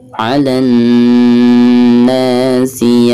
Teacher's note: Di sini dihukumi mad tabi'i karena ada fathah nun lalu berhadapan dengan alif ya. Jadi dibacanya 2 harokat.